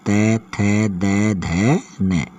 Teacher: ये 5 वर्ण जो हैं ये दंत स्पर्श व्यंजन में आते हैं।